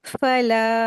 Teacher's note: फला, लाम अलीफ हमजा है, दो हरकत खींच के पढ़ेंगे लाम को, और फा को जल्दी पढ़ेंगे